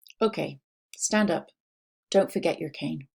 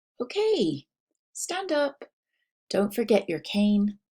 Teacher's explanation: there was a lot of flat falling intonation there was no rise Then Fall